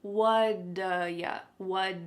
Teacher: That t at the end of the word what is going to change to a d sound. This is really typical of American English where a T that's surrounded by vowel sounds is going to change to a D. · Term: flapped T